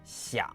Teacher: keep it low, creaky, like a rusty door, 想, but without the rise. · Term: third tone